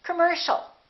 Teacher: the second syllable is stressed. The O and the IA are both reduced. So it's not com or calm, it's come.